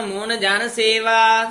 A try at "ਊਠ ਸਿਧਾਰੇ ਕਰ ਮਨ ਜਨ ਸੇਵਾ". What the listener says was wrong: ਸਿਧਾਰੇ ਸਿਹਾਰੀ ਲਾ ਕੇ ਬੋਲਿਆ ਕਰ। ਊਠ ਸਿਧਾਰੇ ਕਰ ਮੋਨ ਜਨ ਸੇਵਾ।